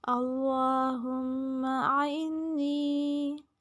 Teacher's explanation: اللہم میں لام کو لمبا کریں گے، میم پہ غنہ، آئنی، آ اور عین دونوں میں فرق واضح ہونا چاہیے، نون پہ غنہ اور جائے مدہ یا ساکن سے پہلے زیر، اس لیے نون کو لمبا کریں گے۔